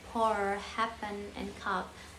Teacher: And so manner articulation, there are separate into and the third one is manner of articulation. The first one is the stop, the total abstraction of the outgoing airstream by articulator. Example like P, voiceless bilabial like pour, happen, and cup